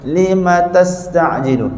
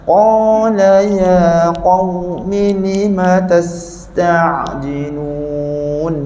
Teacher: masa kita sebut tas, angin sin kena lama dan hidup.